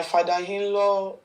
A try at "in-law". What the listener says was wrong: you can't even make a clear pronunciation. It is in-law. You are using I to call H. In-law.